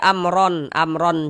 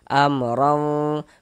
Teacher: Kemudian dengungkan. Jadi di bagian romnya itu suaranya itu kita tahan, kita panjangkan sebentar ya, kira-kira sepanjang 2 harokat.